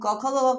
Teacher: क वर्ग का जो उच्चारण स्थान होता है वह होता है कंठ